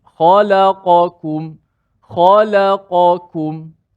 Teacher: Yang mana kita nak kena jelaskan dua-dua huruf qaf. Qaf sifatnya tebal. Walaupun makhrajnya dekat dengan kaf tapi kaf nipis.